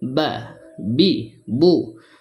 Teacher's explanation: যে কেউ বা উচ্চারণ করতে পারবে, মানে বার উচ্চারণটা অনেক সহজ, খুবই সহজ উচ্চারণ হয়ে যায়। দুই ঠোঁটের মাঝখান থেকে উচ্চারণটা হয়